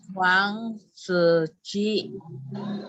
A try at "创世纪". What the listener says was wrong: Nah, setelahnya kan salah. Se, nada 4. Chuang, se, ji.